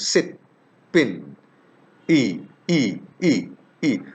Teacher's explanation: It's unrounded. This vowel is pronounced in the front centralized part of vocal tract. Front centralized part, not fully central, not fully front, just above the central part. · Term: short vowel